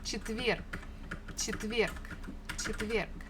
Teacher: the last letter is G, but we can easily pronounce it as K, just to make it a little bit easier for us for articulation.